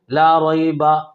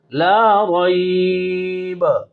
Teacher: वक़फ़ की सूरत में ज़बर को ख़त्म करो। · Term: वक़फ़ बिल इस्कान